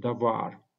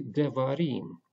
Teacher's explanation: Because the suffix of the plural suffix is added to the word, the first vowel is reduced to Shewa. So we do not have a kametz, but we have a Shewa in this case.